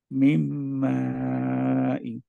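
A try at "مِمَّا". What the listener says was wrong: মানে মিমটা, মেন কথা হচ্ছে মিম ধরে রাখতে হবে, গোড্ডা যেহেতু। আর একটু চার টান হবে ভাইয়া, লম্বা একটু মাতে।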